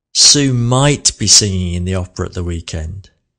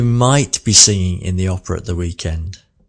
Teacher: might was the slowest word there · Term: sentence stress